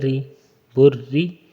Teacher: اسی کی حرکت کو آپ نے دیکھنا ہے کہ اس کے نیچے کیا ہے، زیر ہے، تو بس اس کو باریک پڑھنا ہے